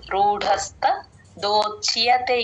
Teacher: ఇక్కడ రూఢలో డ కి మహాప్రాణం